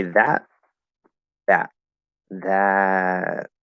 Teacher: Okay, so if I say that, that, that, and the voice kind of disappears and then goes into that voiceless stop